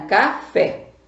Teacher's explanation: Paroxítona, panela, sílaba tônica é a penúltima sílaba. E oxítona, café, sílaba tônica é a última sílaba